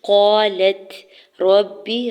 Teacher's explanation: قالت، الف پہلے قاف کے اوپر زبر، الف مدہ ہو رہا ہے، لام کے زبر کو تا ساکن کے ساتھ ملاتے ہوئے ہمز کریں گے۔ قالت ربی، را کے زبر کو با مشدد کے ساتھ ملاتے ہوئے با کی زیر کو بغیر کھینچے ہوئے ادا کرنا ہے